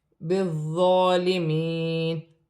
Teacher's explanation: بالظالمین، ظا نرمی والا حرف ہے، مشدد ہے، جماؤں کے ساتھ ادا کیا جائے گا اور کھڑی زبر بھی ہے، ایک الف کی مقدار کھینچ کر بھی پڑھا جائے گا